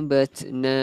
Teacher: Kalau huruf ta, kalau mati dia ada keluarkan angin sedikit, hamas panggil.